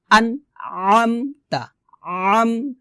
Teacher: আইনটা কিন্তু সাধারণভাবে বলা যাবে না, আইনটাকে গলার মাঝখান থেকে চাপ দিয়ে বলতে হবে।